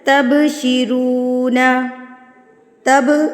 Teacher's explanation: बा साकिन पे कलकला किया जाता है